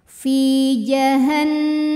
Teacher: Sukun didahului kasrah maka huruf Fa panjang dua harakat Fi jahanama nunnya gunah musyaddadah karena Nun bertasdid cara bacanya dengung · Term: gunnah musyaddadah